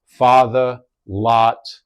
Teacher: for a New Yorker, more of an open sound